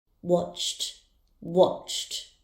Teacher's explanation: The verb watch has a sound ending in ch, so the ed ending will be pronounced as t.